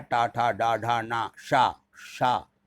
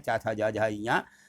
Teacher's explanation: लेकिन टा में जीभ लौटती है और चा में जीभ नहीं लौटती है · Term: टा वर्ग